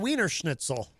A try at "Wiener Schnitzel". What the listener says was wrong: Yeah, V, not W. Wiener Schnitzel.